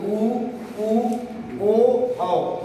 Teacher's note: ऊ का आवाज जब देंगे तो आपकी जो ओठ होगी ना वो थोड़ा सा गोल टाइप बन जाएगी, गोल आकृति दिखाई देने लगेगी। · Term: वृत्ताकार स्वर